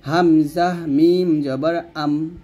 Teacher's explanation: অক্ষরে এগুলা ঠোঁট থেকে আমরা এই চারটা হরফ উচ্চারণ করব তাহলে হামজাকে মিমকে ধরলে দুই ঠোঁট বন্ধ হয়ে যাবে বা দুই ঠোঁট মিল হবে এবং দুই ঠোঁটের শুকনো অংশে মিল করবেন হামজাহ মিম জবর আম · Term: ঠোঁটের অক্ষরে